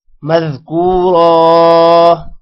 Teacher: شیئا مذکورا، شیئا ام پر غنہ ہوگا، کاف کے بعد واو حروف مدہ ہے، لمبا کریں گے، را کو موٹا کریں گے۔ را پر تنوین ہے، وقف کی وجہ سے وہ ایک زبر میں کنورٹ ہو جائے گی اور الف پڑھا جائے گا ساتھ